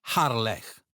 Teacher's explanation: This is a throaty sound, similar to the ch in the Scottish word loch.